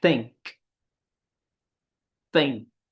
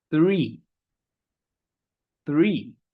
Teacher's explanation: And the vocal cords are not vibrating. We simply do that that shape, that positioning of the mouth, the tongue, and we sort of expel the air through that gap. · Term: voiceless sound